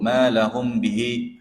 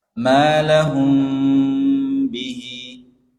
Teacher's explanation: Huruf mim bertemu ba bihi. Harus ada dengungnya. Ini namanya ikhfa syafawi. · Jadi mimnya itu tidak terlalu rapat. Terbuka sedikit sekali.